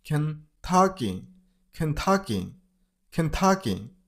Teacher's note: The stress on the middle syllable. On ta syllable.